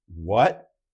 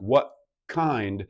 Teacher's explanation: My tongue in casual connected speech immediately goes for the K position, but the stoppage of the airflow is actually at the glottis, at the vocal folds. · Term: glottals